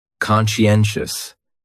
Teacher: So, conscientious has 4 syllables. And the stress is on that third syllable.